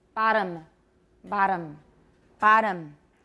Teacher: a tap sounds like a short d